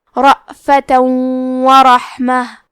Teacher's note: آخری میں تا پہ تنوین زبر ہے، پھر حرف الواو آتا ہے کلمت ورحمہ۔ واو حروف الادغام بغنہ میں سے ہے تو ہم یہ حکم کو غنہ اور تشدید کے ساتھ ادا کریں گے